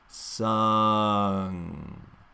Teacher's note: So that's that as in butter vowel, and then the tongue will lift up in the back for the NG.